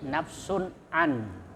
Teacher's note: Kemudian nafsun an, ya, la tajzi nafsun an, nah, itu ada tanwin nafsun, kemudian ketemu ain, nah, itu izhar halqi, artinya dibaca jelas, ya, tidak berdengung. Ain itu huruf halqi yang ada di kerongkongan.